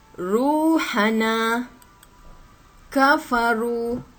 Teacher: ra yang berbaris depan ni dibaca dengan tebal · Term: ra dibaca tebal